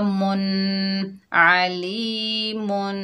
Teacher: मीम के ऊपर 2 पेश हैं तो यहाँ पर हम गुन्ना करेंगे, वसल की हालत में गुन्ना होगा